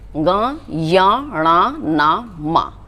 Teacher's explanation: जब आप इनका उच्चारण करते हैं, उच्चारण अर्थात बोलते हैं, तो बोलते समय हमारी नासिका से यानी नाक से आवाज़ आती है। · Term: अनुनासिक